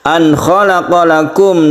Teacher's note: nun mati bertemu dengan kha, disebut izhar halqi, karena huruf kha ini termasuk huruf halqi atau tenggorokan